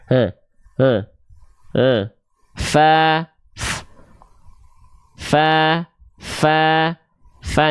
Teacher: Fa itu dilafalkan dari ujung gigi seri atas kita disentuhkan dengan badan atau perut bibir bawah